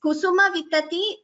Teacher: Kusuma Vitati, the entire word, there is no Mahaprana